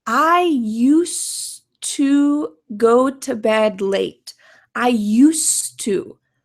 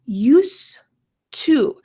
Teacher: we're linking these two words together. So all that you hear is a T, used to. But make sure that when you're writing this, you don't forget that it's in the past.